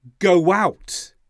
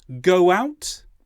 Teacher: did you hear the sound that was in the middle of go out it was a w sound